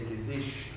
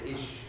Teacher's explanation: in the Mosel region, we speak Moselfränkisch. Mm-hmm. And that's where we pronounce every ch like sh. We would say gizish.